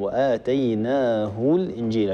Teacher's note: هاء، هي همزة زائدة يؤتى بها للتمكن من النطق بالساكن، وبالتالي هذه الهمزة إذا كانت في وسط الكلام وفي درج الكلام فلا حاجة لنا بها، وهي تسقط في درج الكلام . وآتيناه الإنجيل، بمجرد أن نطقت الهاء المضمومة مباشرة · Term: همزة وصل